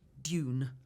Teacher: No J, and none of this double O business. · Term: received pronunciation